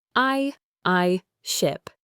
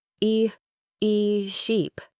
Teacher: For the long e in sheep, you need to smile a little. Your mouth is wider and your tongue is higher and more tense. · For the short i in ship, your mouth is relaxed. I I ship. For the long e in sheep, you need to smile a little.